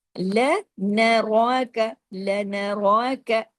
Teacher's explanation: را جو ہے ہیوی بھی پڑھا جائے گا اور الف کے برابر کھینچے گا بھی